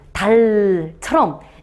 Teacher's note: 약간 구부려가지고 계속 유지하는 소리를 우리는 설측음이라고 해요.